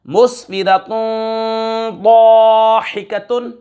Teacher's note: ضاد حروف اخفا میں سے آ رہا ہے، غنہ کر کے پڑھیں گے، اخفا کریں گے